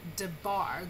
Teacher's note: most Hebrew words are accented or stressed on the last syllable, as in the word debar. The bar is where you get your heavy accent there.